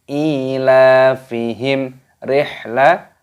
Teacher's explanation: mim sukun bertemu dengan huruf ro, ini hukumnya dibaca idhar syafawi, dibaca jelas. Tidak boleh didengungkan